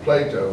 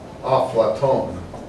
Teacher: Arabic puts another vowel sound to break up the syllable often